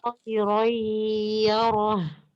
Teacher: Bunyi bacaan nun mati atau tanwin dilebur menjadi ya atau waw sesudahnya dengan tidak sempurna dan disertai kadar dan bobot sentuhan getaran al-khaysyum atau dengung atau gunnah yang kurang sempurna dan bertempo 2 harokat. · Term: idgham bi gunnah